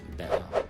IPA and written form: beʔer (better)